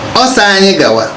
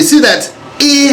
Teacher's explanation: See that E has been swallowed by A. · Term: swallow a vowel